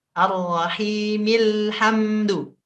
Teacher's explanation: penekanan mil dengan HAM sama